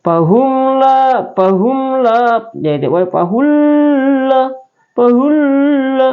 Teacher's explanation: cara membacanya itu di Teran jelas tanpa dengun ya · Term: izhar syafawi